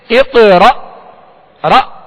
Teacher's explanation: جب حمزہ ساکن پڑھا جائے تو اس میں جھٹکا واضح ہوگا، جیسے اقرأ را، یہ حمزہ ساکنہ میں جھٹکا واضح دیں گے۔